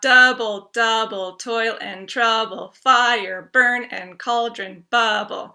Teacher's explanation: the trokey has the stress on the first syllable